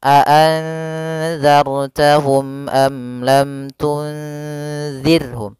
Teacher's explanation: Karena izhar syafawi yaitu apabila ada mim mati bertemu seluruh huruf hijaiyah kecuali mim dan ba, maka dia dinamakan dengan izhar syafawi. Maka ketiganya harus jelas suara mimnya dan tidak boleh ditahan.